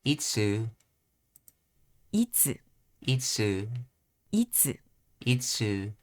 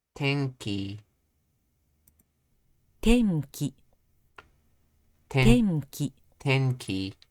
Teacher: Atamadaka means high end. So in this pattern, the first mora is high, and then all subsequent moras are pronounced with low pitch.